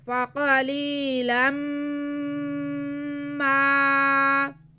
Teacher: ہم تنوین کی آواز کو میم میں ملا کر غنہ کرتے ہوئے پڑھیں گے. فقلیلا ما، میم پہ زبر ہے، ساتھ میں الف ہے تو یہ الف مدہ بھی ہے، اس لیے میم کی آواز کو ہم کھینچیں گے.